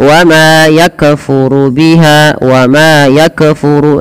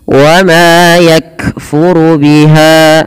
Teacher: Karena kaf tidak boleh mantul.